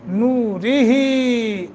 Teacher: یہاں را کے نیچے کسرہ ہے، اس کو باریک پڑھیں گے کسرہ کی وجہ سے